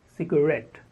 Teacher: The stress on the second syllable, ret.